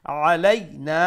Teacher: مشدد واجب غنى أكمل غنى but نا لمبا خربنا علينا عين make sure you pronounce the عين from the middle of the throat